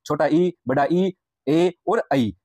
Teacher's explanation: जिन स्वरों के उच्चारण में जिह्वा का अग्र यानी आगे का भाग सक्रिय रहता है उन्हें अग्रस्वर कहते हैं। जैसे छोटा ई, बड़ा ई, ए और आई।